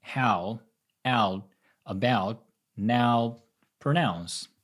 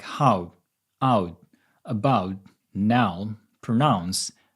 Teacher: what I learned and prefer is saying [æo] instead of [aʊ]